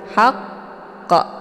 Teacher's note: jadi ini agak sedikit tertahan dulu ya haqq kayak macam bacaan yang terputus tapi tidak terputus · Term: tasydid